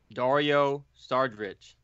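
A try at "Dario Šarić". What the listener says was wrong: Jesus Christ, that was horrible. Dario Saric. Saric. You said Sardric or something.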